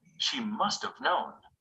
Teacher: When it comes after another word, have usually loses its sound and is linked to the word before it. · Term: weak pronunciation of have